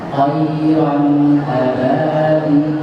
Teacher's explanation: tebal itu datangnya bukan dari bibir, tapi datangnya dari pangkal lidah. Jadi pangkal lidahnya dinaik.